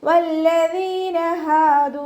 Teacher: വാവ് ഉച്ചരിക്കുമ്പോൾ ചുണ്ടുകളൊന്ന് സർക്കിൾ ചെയ്ത് കൊടുക്കുക